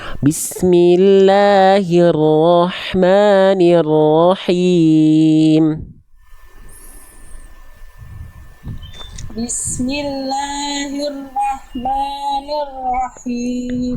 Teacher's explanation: la dan ma-nya disempurnakan 2 harokatnya